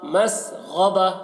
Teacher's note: یہاں پر غین کو حلق سے ادا کر رہے ہیں اور موٹا پڑھ رہے ہیں